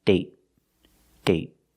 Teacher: with date, we see the vowel is shorter because you have a stop T at the end.